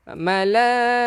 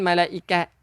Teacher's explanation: Untuk tak marbutah ni, tak yang bulat ni tak marbutah. Jadi kita berhenti bunyi ha.